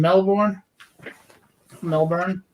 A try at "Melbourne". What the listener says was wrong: you don't pronounce the r as hard so melbourne melbourne like that